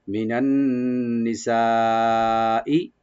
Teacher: মিনান নিসা, মি না, নান ওপেন রাখবেন। আন নিসা এখানে নুন মুসাদ্দাদ ওয়াজিব গুন্না, আর সা ই এখানে মাধ্যে মুত্তাসিল চারালে পর্যন্ত টেনে টেনে পড়তে পারবেন।